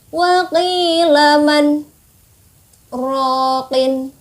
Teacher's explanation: Jadi ada jedanya, tapi kita tidak bernafas. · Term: saktah